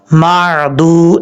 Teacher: اب دال کے بعد واو ہے، یہ واو جو ہے ساکن ہے، واو ساکن سے پہلے پیش تو وہ مدہ ہوگا، ایک الف کی مقدار اس کو لمبا کر کے پڑھیں گے۔ دال کے اوپر کھڑا زبر ہے، کھڑا زبر کھڑی زیر الٹا پیش جو ہے یہ ہمیشہ ایک الف کی مقدار پڑھے جاتے ہیں۔